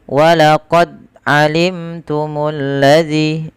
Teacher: di sini dia tidak memantulkan suara bunyi daripada huruf dalnya. Dan ini salah dan kurang tepat. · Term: tidak mantul